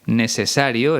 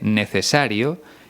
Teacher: pronuncia la c y la zeta como si fuera una s